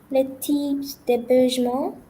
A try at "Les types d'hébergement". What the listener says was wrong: So I would like to know why the S was pronounced for the TYPE word. Why did you pronounce the S? The S of the plural is generally silent.